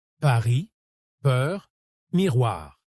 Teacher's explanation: Il faut que l'air passe librement, avec juste ce petit frottement guttural qui donne ce son typiquement français. Quand vous trouvez ce point d'équilibre, le R devient facile et naturel. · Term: Le R français